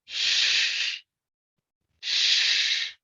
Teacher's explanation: if you place your two fingers on your throat and you pronounce this sh, do you notice any vibration? No.